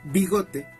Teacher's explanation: esta palabra tiene acento en la sílaba go y no lleva tilde, porque no cumple con ninguna de las reglas de las palabras graves.